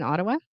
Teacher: English speakers will say D like a fast D like here in Ottawa